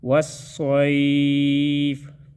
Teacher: صاد مستعلی حروف میں سے ہے، اس کو ہم موٹا ادا کریں گے